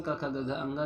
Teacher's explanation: क वर्ग में क ख ग घ अंगा जिन्हें कंठ ध्वनियाँ भी कहते हैं